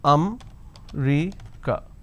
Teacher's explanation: in northern part of the country they pronounce this as um Rica so they drop a syllable instead of saying America they say I'm going to America for